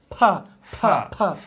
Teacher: দুই ঠোঁট চেপে ফা ফা ফা ধাক্কা লেগে বাতাসটা বের হবে